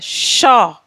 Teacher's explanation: मूर्धा को। तो मूर्धा और जीभ में घर्षण के कारण हमारा वर्ण शा उत्पन्न हो रहा है, शा। अब आता है स।